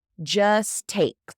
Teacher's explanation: Just, very commonly, we lose that T. So we'll take the next T from the take.